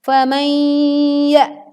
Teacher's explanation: Dengungkan dengan meleburkan nun sukun ke huruf ya.